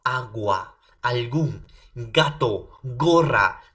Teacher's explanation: Entonces, profesor, representa el fonema oclusivo velar sonoro.